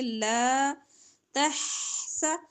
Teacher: ح وسط حلق سے، حلق کے درمیان سے